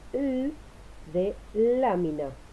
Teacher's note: Dentro de las líquidas dijimos que también estaban las laterales, que se producen con el cierre de la lengua contra el paladar, de modo tal que el aire fluye por ambos lados de la lengua.